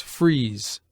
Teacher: an s uttered with a closer compression of the palate by the tongue